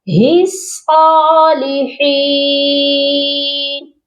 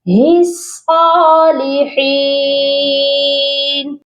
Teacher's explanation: اور اس میں ایک اور کامن مسٹیک جو کہ بہت سے لوگ کرتے ہیں، ہی صالحین، لاسٹ والا ورڈ ہی صالحین نہیں ہوگا، ہاں کو ہم نے صاد مشدد کے ساتھ ملانا ہے، یہ پڑھا جائے گا ہی صالحین، صاد کو موٹا بھی کریں گے اور صاد پر سختی بھی کریں گے ہاں کو ملاتے ہوئے